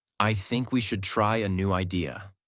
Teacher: Voice goes down at the end. This is called falling intonation, and it instantly makes you sound more mature, certain, and in control.